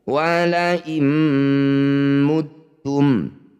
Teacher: Wala muttum, nun sukun bertemu mim disebut bacaan idgham bi gunnah. Cara bacanya bunyi nun langsung masukkan pada mim, dengungkan 2 harokat dengan merapatkan bibir.